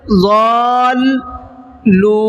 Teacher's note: لام کو ڈبل پڑھنا ہے، ضالون نہیں پڑھنا ہے بلکہ ضالو، لام پہ رکنا ہے تھوڑا سا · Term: تشدید